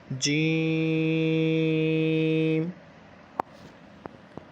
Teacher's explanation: جیم، اور اس کا مخرج یہ کہاں سے ادا ہوگا؟ زبان کے درمیان اور تالو، اوپر کے تالو جو ہے اس کے درمیان کے ساتھ ملا کے